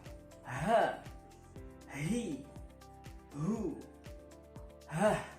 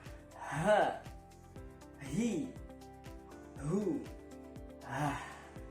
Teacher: Ya, jadi tekanannya ada di tenggorokan bagian bawah mendekati dada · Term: huruf H